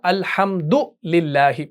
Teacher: یہاں پر ہے الحمدو، یعنی دال کے اوپر پیش ہے تو ہم اس کو سنگل حرکت سے ادا کرتے ہیں نا